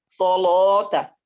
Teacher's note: bukan lo, ya, bukan lo, tapi la, sebenarnya la, tapi dia tebal seperti lafaz Allah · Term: lam tebal